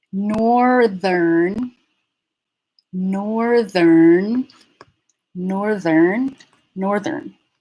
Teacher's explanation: So we're maintaining the voicing in the middle so that there's voicing throughout the whole word. There's no switching between voicing.